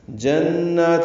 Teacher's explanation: نون مشدد پہ غنہ ہے اور 2 حرکات لمبا بھی کرنا ہے